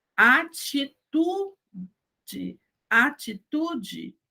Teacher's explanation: Então, eu não digo atitude, eu digo atitude. E o E no final vira I.